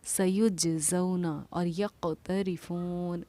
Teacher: یہاں جیم پر کیونکہ جزم سکون ہے تو قلقلہ ہوگا، قاف پر کیونکہ جزم سکون ہے تو قلقلہ ہوگا۔ سَيُجْزَوْنَ اور یقترفون، یک آواز کا لوٹنا ہمارا قلقلہ کرنا کہلاتا ہے۔